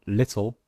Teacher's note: the consonant l is pronounced as a separate syllable · in the word little, the L sound is in fact a new syllable. So we use this symbol.